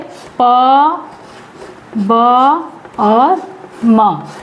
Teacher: इन ध्वनियों के उच्चारण में श्वास या वायु की मात्रा कम होती है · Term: अल्प प्राण